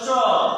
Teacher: চ উচ্চারিত করলে জিহ্বা তালুকে স্পর্শ করে। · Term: তালব্য ব্যঞ্জন